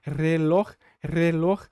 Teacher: com essa ponta da língua batendo várias vezes na ali na parte de trás dos dentes